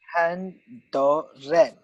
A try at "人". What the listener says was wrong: You're like it's the 人. It's the second tone. So you go up. It's not like you go down. It's not a free fall. It's when you go up. 人.